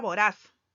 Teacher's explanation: La palabra voraz lleva el acento en posición 1, por lo tanto es una palabra aguda.